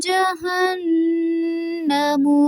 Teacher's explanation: جہنم نون مشدد پہ غنہ ہوگا، ناک میں آواز لے کے جائیں گے